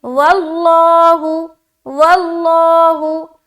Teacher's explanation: لفظ اللہ کا جو لام ہے اسے موٹا ادا کریں گے کیونکہ واو کے اوپر کیا ہے, زبر آ گیا